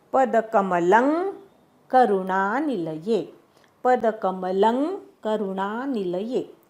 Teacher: पदकमलम ल वरचा अनुस्वार आहे, त्याचा उच्चार ङ असा करायचा. क ख ग घ ङ असतो तसा करायचा.